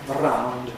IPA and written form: əˈraʊnd (around)